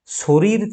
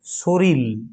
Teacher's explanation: কারণ আমরা পড়ে এলাম যে শরীর এই শব্দটি যদি আমরা দেখি, শরীর শব্দটিতে দুটি সমব্যঞ্জন আছে, দেখো কি কি, র, এই যে দুটি সমব্যঞ্জন, দুটো র। তাহলে দুটি সমব্যঞ্জন ছিল, এদের উচ্চারণের সুবিধের জন্য আমরা শেষের যে রটি এটির পরিবর্তন করে আমরা করে দিচ্ছি ল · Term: বিষমীভবন